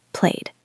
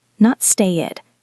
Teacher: You don't say play it, you say played. Just a soft D. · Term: D sound